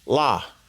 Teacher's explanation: it's a short La it's kind of just like a bounce of your tongue really